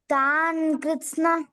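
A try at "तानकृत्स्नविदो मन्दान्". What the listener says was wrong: తాన కృష్ణ న మంచిగా పలుకు ఎందుకంటే అకృష్ణ రావాలి అక్కడ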